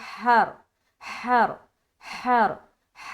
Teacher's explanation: ह निकाल लेंगे बिल्कुल सीने की तरफ से